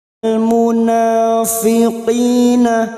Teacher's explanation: alif kecil di atas atau fathah berdiri matabi'i, 2 harokat kita panjangkan